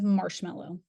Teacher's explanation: the consonant m is a nasal bilabial sound to produce the M sound both lips come together to create · both lips come together to create a complete closure, blocking the airflow through the mouth. Air is then directed through the nasal passage, causing vibration of the vocal cords and producing the nasal sound.